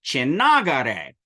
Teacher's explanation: That is an unvoiced ta that became the voiced appropriate nasal for na.